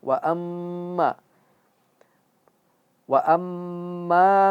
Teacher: wa amma itu dia ghunah dan masuk ke hidung